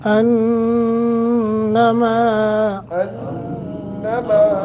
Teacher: انما نون مشدد ہے، غنہ کریں گے، ما 1 سیکنڈ کی مد کریں گے کیونکہ میم کے آگے الف ہے۔